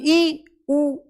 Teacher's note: ऊ को रखो तो हल्का सा खुलता है सिर्फ